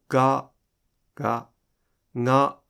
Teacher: When certain Japanese people pronounce the [g] consonant, it sounds like the sound is coming from the nose. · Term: nasalized [g] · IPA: [ŋa]